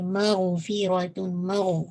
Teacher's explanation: فا کی کسرہ شارپ رکھے گا، را کو ہیوی